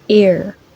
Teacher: The tip of the tongue is approaching the post-alveolar area but not close enough to make friction.